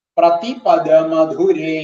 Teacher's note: പദ എന്നുള്ള ദകാരം എന്ന് പറയുന്നത് മൃദു, ധു എന്നുള്ളത് മധുരേ എന്നുള്ളതിന്റെ ധു എന്ന് പറയുന്നത് ഘോഷം.